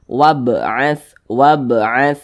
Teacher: huruf wa di sini dibaca pendek tidak dibaca panjang Karena di depannya ada huruf yang sukun